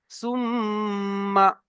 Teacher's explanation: তারপরে দেখেন, মিমের উপরে তাসদিদ এসেছে, দেখেন মিমের উপরে, মিমের উপরে তাসদিদ এসেছে, তাহলে গুণনা করে পড়তে হবে, একালিফ পরিমাণ গুণনা করা ওয়াজিব। সা মিম পেশ সুম, মিম জাবার মা, সুম্মা, এমন ভাবে গুণনা করে পড়তে হবে।